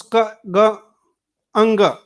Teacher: similarly we have other sounds like ga and ka. So these are velar sounds